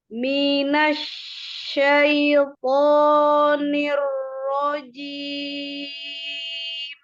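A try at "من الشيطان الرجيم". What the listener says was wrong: Ya, pokoknya kurang dibuka. Dibuka. Nah, jadi jangan minasyaiton gitu, tidak minasyaiton begitu kan? Ini kan minasyaiton, tidak ada pergerakan. Tapi lebih dibuka. Minasyaiton. Dibuka.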